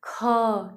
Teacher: बोलने में हमको ज्यादा टाइम लग रहा है ठीक है और ख बोलने में थोड़ा जैसे लग रहा है कि लास्ट में ह आ रहा है